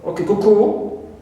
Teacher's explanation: we stress the first syllable and not the suffix